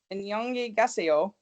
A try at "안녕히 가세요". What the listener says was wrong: I thought you had the pronunciation on the wrong syllable. Emphasis. Emphasis.